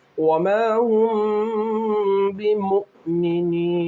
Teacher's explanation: میم ساکن کے بعد با ہونے کی وجہ سے اخفاء شفوی ہوگا، میم میں گنہ کیا جائے گا